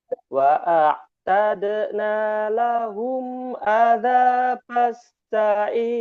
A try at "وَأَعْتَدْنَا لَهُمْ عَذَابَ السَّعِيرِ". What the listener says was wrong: Masya Allah, sudah Bapak dapati ya, tinggal dipertahankan Pak ya, syukron.